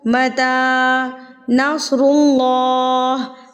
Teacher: अल्लाह से पहले अगर पेश आ जाए तो अल्लाह हैवी यानी कि पुर पड़ा जाता है।